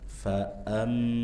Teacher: Kemudian hamzah dibaca dengan tegas jangan dibaca mirip alif